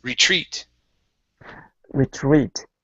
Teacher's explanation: our stress is at the very end